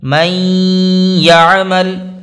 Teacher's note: ایسے ہی آگے دیکھیں، نون ساکن کے بعد پھر یا دوسرے کلمے میں آ رہی ہے، من الگ کلمہ ہے، یعمل الگ کلمہ ہے۔ نون ساکن کے بعد یا آئی دوسرے کلمے میں، تو یہاں پر بھی ہم غنہ کے ساتھ ملا کر پڑھیں گے